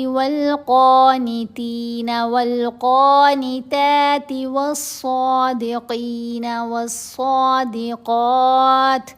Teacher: صاد کو بھی موٹا پڑھنا ہے، قاف کو بھی، دونوں جگہوں پر، اور لمبا بھی کرنا ہے